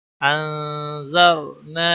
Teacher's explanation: نون ساکن ہے، اس کے بعد حروف اخفا کا حرف آیا ہے، اس لیے نون ساکن پر اخفا ہوگا، اسے اخفا حقیقی کہتے ہیں۔